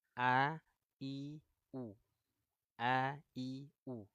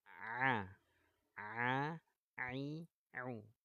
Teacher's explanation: Huruf hamzah ada di tenggorokan bagian bawah. Pangkal. A, I, U. A, I, U. Nah, sedangkan huruf ain ya keluarnya dari tenggorokan tengah.